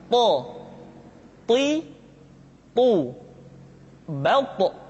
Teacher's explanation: th diucapkan dengan menyentuhkan ujung lidah dengan gusi-gusi dua gigi seri bagian atas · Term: huruf th